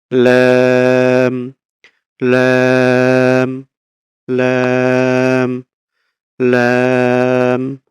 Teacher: জিহ্বার আগার কিনারা সামনের উপরের দাঁতের মাড়ির সঙ্গে লাগিয়ে ২ পাশের যেকোনো এক পাশে আমরা দাঁতের মাড়ির সঙ্গে লাগিয়ে এই যে ২ পাশে আমরা এখানে দেখতে পাচ্ছি যেকোনো এক পাশে চাপ দিয়ে আমরা উচ্চারণ করতে পারি। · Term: লাম